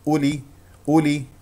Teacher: نفتح الفم في الالف ونضم الشفتين في همزه مضمومه